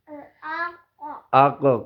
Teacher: چونکہ یہ قاف دو نقطوں والا ہے، اسی چھوٹے گوشت کے پاس سے ادا ہوتا ہے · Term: حرف لہاتیہ